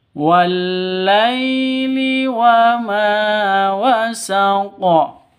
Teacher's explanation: Wasaq qalqalah, ya qafnya qalqalah kubra karena di akhir kalimat.